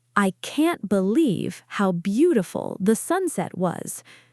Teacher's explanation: Content words, believe, beautiful, sunset. Stress those. Function words, I, can't, how, the, was. Reduce those. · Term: English rhythm